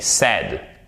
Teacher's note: Et là, vous retombez sur l'équivalent un peu du… Parce que c'est pas exactement la même chose, mais on est très proche du « e » accent grave, mais avec un peu plus de puissance